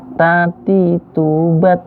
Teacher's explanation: Huruf ta ini salah satu huruf hamas. Jika dimatiin dia berdesis.